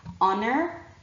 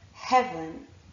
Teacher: you will feel that there is no air because the H is silent